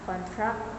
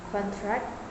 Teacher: the stress is placed on the first syllable for nouns and on the second syllable for verbs